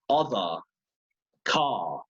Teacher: the R is dropped here at the end of words or near the end after a vowel and before a consonant